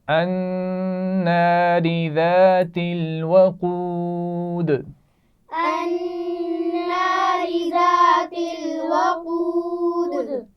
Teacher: الناری نون پر غنہ کیا جائے گا. ذات الوقود ملا کر پڑھے جا رہے ہیں، اس کا خیال رکھنا ہے اور آخر میں پھر قلقلہ ہو رہا ہے دال پر.